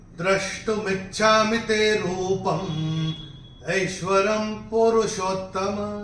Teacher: अनुस्वार का उच्चारण होगा म